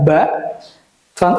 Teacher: selanjutnya kita akan masuk ke huruf yang keluar dari dua bibir huruf ini ketika dibaca pasti menggunakan dua bibir kita bersentuhan